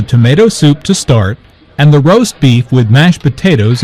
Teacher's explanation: Notice that tomato soup, roast beef, mashed potatoes, and peas are stressed because the food order is the important information here.